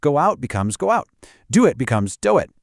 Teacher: And lastly, vowel plus vowel. When one word ends in a vowel and the next starts with one, we sneak in a tiny almost invisible W or Y sound.